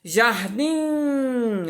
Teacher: Jardim, ó, o DIM é sílaba tônica.